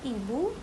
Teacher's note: vokal hadapan sempit atau tinggi seperti I, contohnya ibu